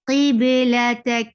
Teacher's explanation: We are stopping over here, so we'll give sukoon, and with sukoon, kaf will get sifa of hams